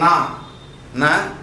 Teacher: During the production of na also, the tip of the tongue touches the alveolar ridge.